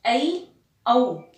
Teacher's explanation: संयुक्त यानी उनमें दो प्रकार के स्वरों का संयोग हुआ है, इसीलिए उन्हें हम कह देते हैं संयुक्त स्वर।